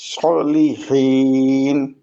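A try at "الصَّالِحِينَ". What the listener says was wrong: সলিহিন, সতেও স্থিরতার সাথে একালিফ টান দিতে হবে।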